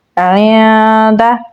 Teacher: عین کو گلے کے درمیان والے حصے سے نکالیں گے اور نون کے ساتھ ملائیں گے. نون ساکن کے بعد دال ہے تو یہاں پر ہم اخفا کریں گے